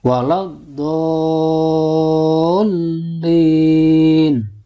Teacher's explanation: jadi cara membacanya pertama dipanjangkan dulu dol, baru ditasdidkan ke huruf lam · Nah, ini nama hukumnya adalah mad lazim musaqqal kilmi, atau bisa juga disebut mad lazim kilmi musaqqal, sebab ada mad tabi'i bertemu dengan huruf yang bertasdid dalam satu kata. Nah, panjangnya adalah 6 harokat.